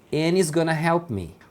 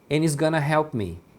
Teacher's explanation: o and eles acabam juntando com o he dessa junção eles pronunciam any. Aqui no caso o he is também foi emendado.